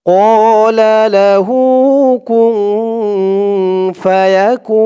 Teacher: কু বলে 3 আলিফ টান দিয়ে এই নুনকে ধরবে নুনের উপরে পেশটা সাকিন হয়ে যাবে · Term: মধ্যে আরজি